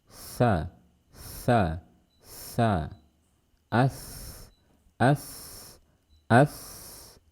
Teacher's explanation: Jadi harus terdengar ada suara nafas yang keluar dari mulut kita saat kita melafalkan huruf tha. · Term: hams